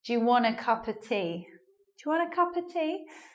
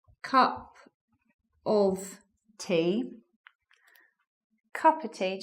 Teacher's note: so the of joins the words before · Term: elision